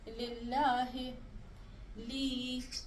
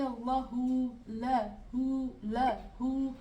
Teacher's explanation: جیسے ہمارے پاس ہے اللہ ہو، اور جیسے لام کے نیچے زیر آتی ہے تو ہم کہتے ہیں للہ لی، اوکے۔ جب لام کے نیچے زیر ہوگی تو ہم اس کو بہت پتلا اور سافٹ کر کے پڑھیں گے، لیکن جب لام کے اوپر زبر ہوگی تو ہم اس لام کو موٹا کر کے پڑھیں گے، بھاری کر کے پڑھیں گے نا، بہت بھاری کر کے پڑھیں گے، تو لا کر کے پڑھیں گے، لیکن جب اس کے نیچے زیر ہوگی تو لی کر کے پڑھیں گے، لی۔